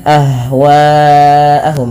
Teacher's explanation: panjangkan bunyi suara wa, karena di sini ada namanya mad wajib muttasil yang dimana dipanjangkan 4 atau 5 harokat